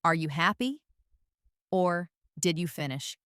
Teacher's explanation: Rising intonation is used for yes or no questions. Your voice goes up at the end to signal that you're asking for an answer.